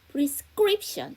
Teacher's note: S 사운드 뒤에 무성음 C가 나왔으니까 쌍장 프리스크립션 이렇게 되겠죠